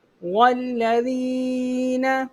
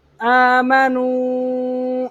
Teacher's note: حروف مدہ کے بعد حمزہ دوسرے کلمے میں مد منفصل، اس کو 2 اڑائی الف کے برابر کھینچ کے پڑھا جاتا ہے